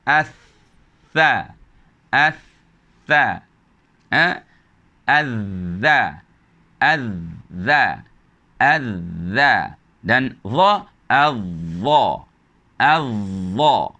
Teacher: Lidah akan menyentuh gigi atas. Tidak menyentuh belakang gigi, tapi dia menyentuh bahagian yang tajam daripada gigi atas itu. Hati-hati jangan dilembikkan lidah sehingga lidah menempel ke bahagian sini, yang mana tidak terhasillah bunyi daripada hujung lidah menyentuh gigi. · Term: tha, zal dan juga dha